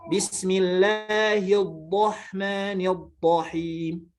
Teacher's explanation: muhasramah atau hasramah itu menghilangkan bunyi getaran ra.